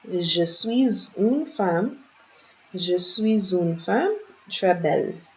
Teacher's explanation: Remember the liaison because of the S and the U, the S coming before the vowel. So, je suis une femme, not femme, très belle.